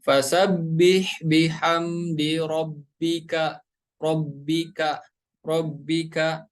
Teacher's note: huruf kaf tempat keluarnya dari ya aqsal lisan atau lidah bagian belakang.